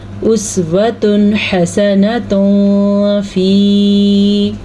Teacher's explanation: یہاں پہ تنوین کے بعد حا آیا ہوا ہے تو یہاں پہ ہم اس کو ظاہر کر کے پڑھیں گے۔ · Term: اظہار